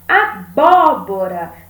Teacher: Temos a antepenúltima sílaba mais forte. Então, essa palavra é uma palavra proparoxítona.